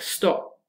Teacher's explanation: you use a glottal stop, this tiny moment of nothingness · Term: preglottalization